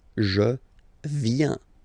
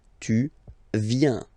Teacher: Final S not pronounced.